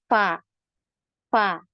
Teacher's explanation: walaupun kita enggak naruh tangan di depan mulut ini kerasa banget ada aliran nafasnya